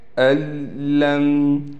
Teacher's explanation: اس نون کو ہم ادغام کے قاعدے سے ختم کر دیں گے۔ اس حمزہ کو ہم ڈائریکٹ اس لام سے ملا دیں گے۔